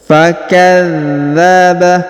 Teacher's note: Huruf dza ditahan dan ditekan.